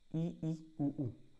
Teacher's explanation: मुंह बंद है। तो मुंह लगभग बंद रहेगा। बहुत कम खुला रहे उच्चारण के टाइम पे वो संवृत कहलाते हैं।